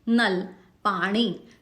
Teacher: सीधा सीधा हमारी जो टंग है वो सीधी निकलती है दांत के पीछे